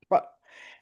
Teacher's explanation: the tip of the tongue's poked out, and then the tongue is retracted as her head pops back, and there's a forceful expulsion of air